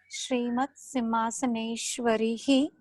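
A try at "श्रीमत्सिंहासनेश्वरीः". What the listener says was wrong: Simhasaneshwari. It's a dirgha.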